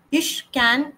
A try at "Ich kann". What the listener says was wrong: You're speaking like English. It's not can, it's kann.